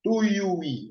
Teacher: Ó, o iu, você tem um ditongo antes, portanto, a sílaba tônica, que é o i final, recebe o acento.